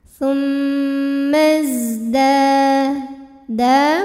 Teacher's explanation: Mad Thobi'i dahiri karena ada Alif didahului baris fathah maka cara bacanya panjang dalnya dua harakat